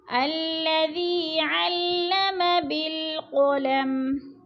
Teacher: اقرأ وربک الاکرم ورب را پر اور با مشدد سختی سے جمع کر، وربک الاکرم الذی ذی پہ یا مدہ ہے، یا مدہ کو تھوڑا سا کھینچ کے پڑھنا ہے، 2 حرکات کے برابر